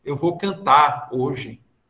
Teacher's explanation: a gente costuma engolir esse R e transformar a palavra numa oxítona com acento gráfico, né? Como se tivesse um acento gráfico, dá até uma intensidade.